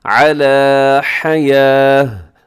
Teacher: تو پھر اس کو سنیے گا، میں نے کیا کیا کہ حیاتن پر میں نے سانس کو توڑ دیا ہے، علی حیاہ، اور آخر میں تا ہے تو تا پہ وقف کریں گے تو اس کو گول ہا کے ساتھ بدل دیتے ہیں